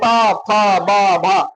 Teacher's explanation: दोनों होठ एक दूसरे से स्पर्श करते हैं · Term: ओष्ठ